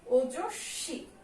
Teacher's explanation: শয়ের সঙ্গে যেহেতু ব আছে, ব ফলা, তাই এখানে শয়ের ডাবল উচ্চারণ হবে